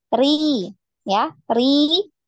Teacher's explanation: Nah, rinya tidak dinaikkan pangkal lidahnya karena tipis ya.